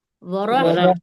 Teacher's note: را کے اوپر جب زبر ہوتا ہے، یہ پیش ہوتا ہے، تو ہم را کو موٹا پڑھتے ہیں، موٹا ورح، پڑھتے ہیں۔